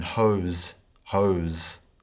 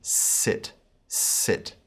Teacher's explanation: in the erasmus pronunciation sigma is pronounced with a z sound as in hose hose in the modern pronunciation it's more of a straightforward s sound as in sit sit